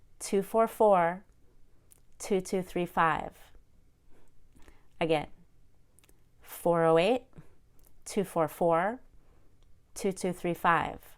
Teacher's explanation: I group my phone number into 3 parts, and I stress the last number in each part.